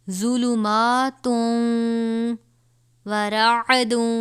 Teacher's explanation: تنوین کے بعد حرف یرملون میں سے یہ واو ہے، اس پہ گنہ کر کے پڑھیں گے